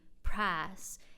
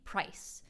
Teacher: In the American South, for example, there’s the Southern Vowel Shift: think older folks saying prahs [price] and younger folks saying price